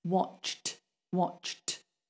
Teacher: When people say watched, often it just sounds like watch. People forget the t, the ed on the end. · Sometimes people do it like watched with a d, but it's not a d, it's a t